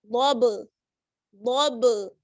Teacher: آواز لوٹ کر واپس آئے گی, ٹکر کھا کر واپس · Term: قلقلہ